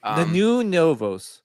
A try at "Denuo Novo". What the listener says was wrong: Novo. No, there's no S. Denuo Novo. Yeah, it does sound exactly like it's spelled, but because the Novos had an S, and that's part of it. So people, and we've been called the Denuo Novos.